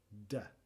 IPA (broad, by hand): d